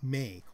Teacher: it ends with a little e, a little I sound. So may, I'm sort of exaggerating it. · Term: diphthong